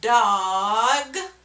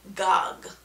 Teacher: we call that backing so they're coming from the back instead of from the front for that sound